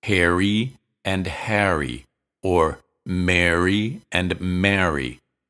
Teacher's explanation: followed by a vowel sound you'll hear both air and a people who use this pronunciation don't distinguish between the words Harry and Harry or Mary and Mary they say air for all of them